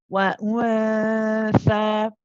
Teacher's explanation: the tha is then prolonged, of course, for 2 counts because it has the mad tabi'i with it.